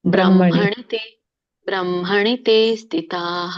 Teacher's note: ಬ್ರಹ್ಮಣಿ ಅಂತ ಮತ್ತೆ ಎಳಿಬಾರ್ದು, ಬ್ರಹ್ಮಣಿ ತೇ, ಬ್ರಹ್ಮಣಿ ತೇ ಸ್ಥಿತಾಃ, ಕೇವಲ ತೇ ಎಳಿಬೇಕು.